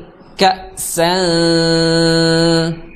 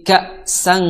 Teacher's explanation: nafasnya itu atau suaranya ngalir melalui rongga hidung ya melalui rongga hidung full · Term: ikhfa